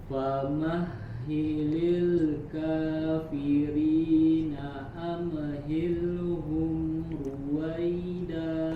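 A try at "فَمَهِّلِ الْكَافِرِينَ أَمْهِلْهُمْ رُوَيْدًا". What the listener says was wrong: Termasuk ketika am juga. Tahan dulu makhrajnya. Jangan dilepas dulu, jangan ya, kalau dilepas dia pasti menimbulkan suara pantulan. Jadi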